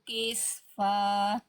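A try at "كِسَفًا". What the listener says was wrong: Kisafa. Sinnya bukan sukun tapi harokatnya fathah ya.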